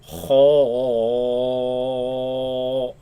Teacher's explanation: the back of the tongue is raised, producing the heavy sound, or making like a curve inside the mouth and against the top palate, So there's that hollow space in the mouth, and that's where the sound basically echoes.